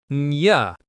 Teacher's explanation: Next, and is reduced to just ’n.